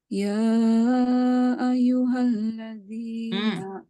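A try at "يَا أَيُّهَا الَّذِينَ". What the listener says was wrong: Ianya bertasydid. Tadi tekan sikit.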